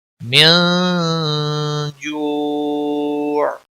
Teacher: من نون ساکن کے بعد حروف اخفا کا حرف آیا ہے تو یہاں پر اخفا ہوگا. اس اخفا کو اخفا حقیقی کہتے ہیں.